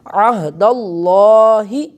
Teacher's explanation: ایک عین بھی پڑھا جا رہا ہے اور آخر پر ہا جو ہے اس کی بھی آواز آ رہی ہے